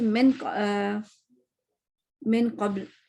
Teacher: اب من قبل میں کیا ہوگا, میں کیا کروں گی, نون پہ تو میں تو غنہ اوپر چڑھا دیا نا میں نے, اس کو میں ایرو سے نشان بنا دیتی کہ میں, مگر میں نے قاف کی وجہ سے اپنی زبان بھی قاف کی طرح بنا لی, یعنی کہ پیچھے سے اٹھا لی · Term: اخفا بھی موٹا